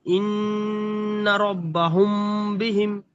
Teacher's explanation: মিম সাকিনের পরে বাস তাই মিম সাকিনকে এক আলিফ পরিমাণ গুন্না করে পড়তে হবে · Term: ইফায়ে সাফাবি